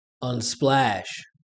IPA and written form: ʌnˈsplæʃ (Unsplash)